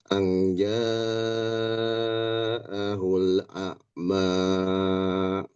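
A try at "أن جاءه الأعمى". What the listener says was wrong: Jangan terlalu panjang. 2 harokat saja. A'ma.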